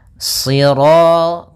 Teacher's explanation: Karena shad itu pangkal lidah kita terangkat dan melekat karena dia huruf idbaq